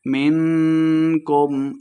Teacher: اخفا یعنی غنہ کر کے پڑھیں گے